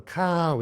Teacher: Khao is falling long. But at first I would say kin khao, and I just said falling.